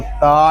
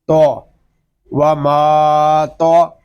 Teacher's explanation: تو حروف مستعالیہ میں سے ہے، اس کو پر پڑھیں گے، اس کو تا نہیں پڑھیں گے، اس کو پڑھیں گے تو، و ما تو۔